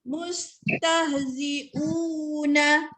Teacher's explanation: 2 harakat u tu mad badal, ya. Okey, ketika dia jadi mad badal ketika wasal sahaja.